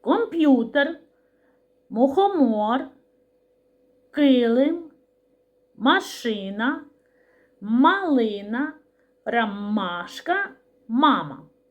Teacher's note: звук м вимовляється за допомогою губ та Зубків